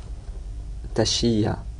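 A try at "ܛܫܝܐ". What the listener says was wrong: Tashia. Il n'y a pas de gémination. Tashia. Tashia. Tashia. Tu vois, c'est le che qui ferme la syllabe là. Tashia. Faut pas avoir peur d'emphatiser.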